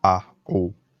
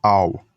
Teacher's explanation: It matters because one of the rules in Greek is when the letter Alpha was followed by Omega, it produces its own natural glottal stop between a sound and an o sound, so you don't need to write any divider to tell the reader it's pronounced like a, o.